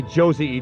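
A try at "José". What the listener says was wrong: It's not Josie, it's Jose. In Spanish, J is pronounced like H.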